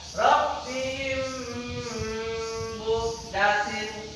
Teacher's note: meleburkan bunyi bacaan mim mati apabila disambut huruf mim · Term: idgham